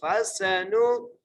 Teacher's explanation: سین کو سیٹی سے ادا کریں گے